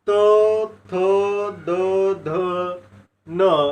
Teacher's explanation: जे वर्ण उच्चारताना आपल्या जिभेचे टोक वरच्या दाताच्या मागच्या बाजूस टेकते त्यांना दंत्य वर्ण असे म्हणतात